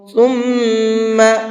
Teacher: ثم اس میم کے اوپر تشدید ہے تو میم کے اندر غنہ کریں گے